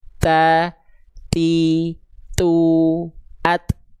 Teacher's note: Terpercik nafas atau terpercikan nafasnya. Ada percikan nafasnya. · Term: hams